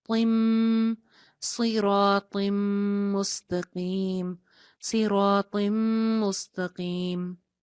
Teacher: तौ की एक जेर को मीम के साथ जोड़ा जा रहा है, नून की आवाज खत्म हो जाएगी